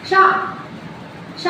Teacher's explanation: श बोलते हैं तो प्रेशर तलवे में इकट्ठा होता है। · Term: तालव्य